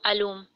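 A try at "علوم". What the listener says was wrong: उलूम आइन के ऊपर दम्मा जी जो है।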